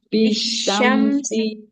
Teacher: sinnya kasroh. Nggak ada ya-nya. Berarti nggak boleh dibaca panjang ya.